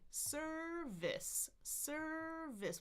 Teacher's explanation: lips are relaxed for both of these, for the schwa sound and the what we call short I. So it's tongue in the middle for schwa, your tongue is in the front for the short I, we call it.